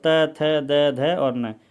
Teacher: जो जीभ है वो दांतों को आकर के लगती है पीछे वाले हिस्से को। तो त, थ, द, ध और न, यानी कि 5 जो वर्ण है वो दंत श्रेणी में आते हैं, ये ध्यान रखना है।